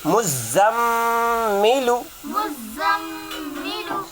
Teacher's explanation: میم مشدد میں غنہ ہوگا